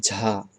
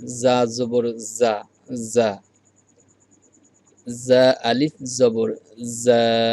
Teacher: এই অক্ষরে তো আর বাতাস বের হবে না, কেননা এটা হলো জেহের, জেহেরের অক্ষর।